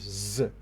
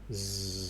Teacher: So the tongue gets close to the alveolar ridge, and then the air vibrates the vocal cord and keeps coming out.